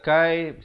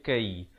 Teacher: Kai ataupun kai, yang betulnya kai. Ada hamasnya di situ, bunyi anginnya.